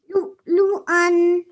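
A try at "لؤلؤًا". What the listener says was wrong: Okay, stretch the an at the end. Okay, lu'lu'an.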